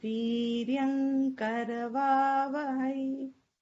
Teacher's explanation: that is to be chanted in the nasal of the ka varga, ka, kha, ga, gha, nga, because it's followed by ka.